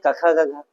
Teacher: पहला क से कंठ और क से क ख गघ तो क ख ग को उच्चारण कंठ से